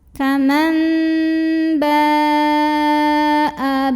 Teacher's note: Kemudian hamzahnya yang a dalam satu kata yaitu kata ba ya. Maka cara bacanya adalah dipanjangkan boleh 4 boleh 5 harokat ya, tidak boleh 2. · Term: mad